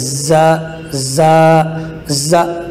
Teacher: زا یہ دونوں دانتوں کو ملا کر سیٹی کی آواز نکال کر پڑھنے سے ادا ہوتا ہے